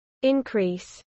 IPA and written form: ɪnkˈɹiːs (increase)